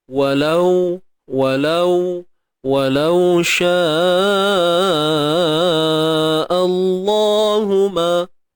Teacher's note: Jadi sebelum kalimah Allah, okey, terdapat huruf yang berbaris atas, maka perlu ditebalkan bacaannya. Yang tebal pada lam je.